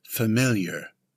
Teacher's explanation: It's an adjective with the stress on the second syllable.